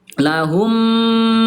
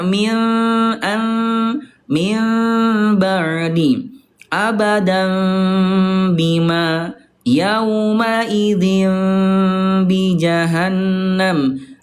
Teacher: mimnya, bibirnya tidak betul-betul ditekan banget seperti halnya mim bertemu dengan mim. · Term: iqlab